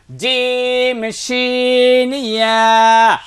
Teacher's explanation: জিহ্বার মধ্যখানে তার বরাবর উপরের তালুর সঙ্গে লাগাইয়া